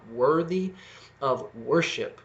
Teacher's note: Okay, they both are alliterated, but more than that, they both start with that wor sound, the O and then the closing R